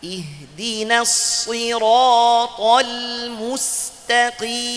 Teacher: Dua-duanya tebal, salah. Yang betul huruf ta tipis, huruf qaf tebal.